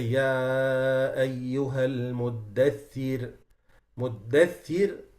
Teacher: now the ra has sukun, kasra before it, it becomes muraqqaq.